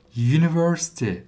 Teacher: bakın u ile okumadım bunu. Ü ile de okumadım Türkçedeki gibi. Y ile okudum. ''yünivörsiti'' dediğim için ''a university''.